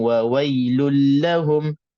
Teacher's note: Nak kena cermat juga, nak kena berhati-hati masukkan semua tanwin yang ada pada lul ke dalam la. Lulla, sedikit pun makhraj nun yang ada pada tanwin itu tak wujud, hilang habis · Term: idgham bila gunnah